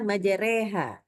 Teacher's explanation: huruf ro-nya itu ya kita baca dengan tipis atau tarkik. Jadi pangkal lidah tetap turun tidak boleh naik ya.